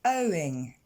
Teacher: on retrouve le son O de know ou encore de show. Et on enchaîne tout de suite avec le son ing. Owing. Et là, cette fois, l'accent tonique tombe sur la première syllabe.